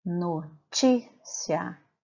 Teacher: Já na palavra notícia, quando eu faço a separação de sílabas dessa palavra, notícia, o ti se sobressai as demais sílabas, portanto, ele é a sílaba tônica